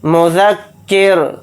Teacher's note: حالت وقف میں را کو ساکن بنا کر پڑھیں گے اور را ساکن ہوگا تو را کو یہاں پر باریک پڑھیں گے کیونکہ رائے ساکنہ سے پہلے زیر آ رہا ہے